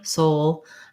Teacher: as you link between those between the o and the dark l there's a little bit of a glide in there